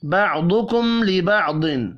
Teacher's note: بَعْضُكُمْ لِبَعْضٍ، ضاد ضاد، دونوں ضاد پر پڑھے جائیں گے۔ میم ساکن کے بعد لام ہے، اظہار شفوی ہوگا، غنہ نہیں ہوگا۔